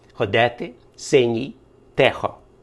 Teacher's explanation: и під наголосом вимовляється широко і тяжіє до е